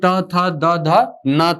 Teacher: दांत से इनका उच्चारण होता है, जिह्वा जो है वो दांत को स्पर्श करती है इन वर्णों का उच्चारण करते समय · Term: दंत्य वर्ण